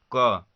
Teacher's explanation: जैसे क, अगर आप क बोल रहे हैं तो क बोलने के बाद लास्ट में क्या अ आ रहा है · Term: व्यंजन वर्ण